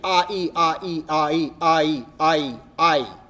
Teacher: AI becomes I, just by merging those two vowel sounds together